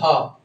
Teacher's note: কন্ঠনালীয় বর্ণ একটাই এটা হচ্ছে হ একদম কন্ঠের নালি · একদম কণ্ঠের নালী থেকে উচ্চারিত হ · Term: কণ্ঠনালী বর্ণ